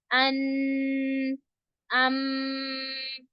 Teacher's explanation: नून और मीम का जो गुना है वो खशम से अदा होता है। यानी नाक के बासे से अदा होता है।